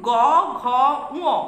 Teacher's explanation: গ, ঘ, উ উচ্চারণ করতে গিয়ে একটা উচ্চারণগত গাম্ভীর্য বা অনুরণন সৃষ্টি হচ্ছে, অর্থাৎ গ, ঘ, উ উচ্চারণের সময় স্বরতন্ত্রের কম্পনের সুর মিশছে। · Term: সঘোষ বা ঘোষ ব্যঞ্জন ধ্বনি